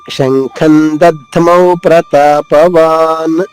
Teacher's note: దధ్మౌ తర్వాత ఆగకుండా ప్రతాపవాన్ వెంటనే పలకాలి.